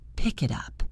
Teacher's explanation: Your brain might try to find the word tup in the dictionary, but once you understand linking, you realize that the T from it moved to up.